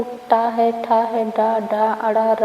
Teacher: इस वर्ण में सभी ध्वनियां आएंगी जो मूर्धन से निकलती हैं। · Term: मूर्धन्य